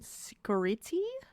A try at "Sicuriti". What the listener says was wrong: That's an Italian name, so it'd be Chicoriti. C-I is pronounced ch.